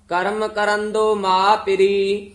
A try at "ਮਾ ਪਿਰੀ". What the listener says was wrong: ਮਾ ਪਿਰੀ ਹੈ ਲਮਕਾ ਕੇ ਜੇ ਬੋਲਣਾ ਹੈ।